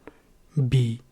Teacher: this is with voicing and without aspiration